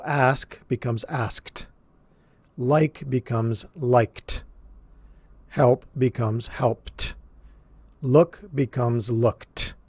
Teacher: even though we're using the letter D, we're pronouncing it as a T sound